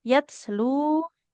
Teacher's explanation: huruf ta itu kan e dia tertahan aliran suaranya tapi nafasnya mengalir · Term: hams